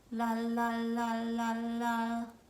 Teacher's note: When making the L sound, let's first talk about placement. Our L sound is going to be created with an open mouth and our tongue tip touching just behind our front teeth on what we call our alveolar ridge, like so. La la la la la.